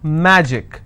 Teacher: magic i will stress on ma